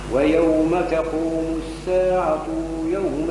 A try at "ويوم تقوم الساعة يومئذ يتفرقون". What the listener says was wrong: الساعة ما فيهاش مد ويوم تقوم الساعة يومئذ يتفرقون عاود أقراها كما هي مكتوبة ويوم تقوم الساعة يومئذ يتفرقون ما تمدش عادي أي عودها ويوم تقوم